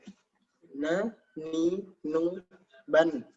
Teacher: makhraj huruf nun adalah bertemunya ujung lidah dengan langit-langit di atas pangkal gigi seri bagian atas